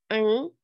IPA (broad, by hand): ŋ